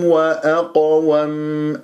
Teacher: والقاف والطاء من احرف الاستعلام فلازم انت تجيب تفخيم مع قلقله